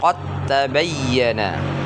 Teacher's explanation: boleh kedengaran bunyi dalnya, ya. Qad tabayyana. Nah, tapi dia langsung ditasdidkan ke huruf ta-nya.